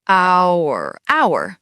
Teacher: The H is completely silent.